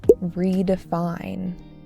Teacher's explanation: stress on the third syllable